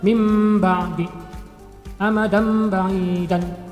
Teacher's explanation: nun mati atau tanwin cara membacanya itu dibalik menjadi mim mati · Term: iqlab